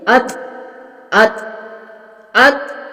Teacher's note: तो को पुर और मोटा पढ़ेंगे और इसके ऊपर थोड़ा कलकला भी होगा